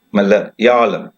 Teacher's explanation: There is a stress, Malayalam. The stress is given before ya sound.